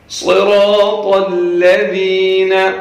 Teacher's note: صاد کو موٹا پڑھنا ہے، را کو بھی، طا کو بھی، تینوں حروف کو موٹا کر کے پڑھنا ہے